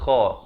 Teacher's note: Kha ni ujungnya kha di ujung kerongkong.